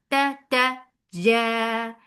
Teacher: There should not be any flow of breath on jim. This is a majhura letter.